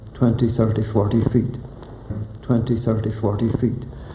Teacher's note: has the rolling R that would later spread throughout the country, then retreat to Southland